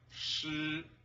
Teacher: the first high flat tone sounds like shi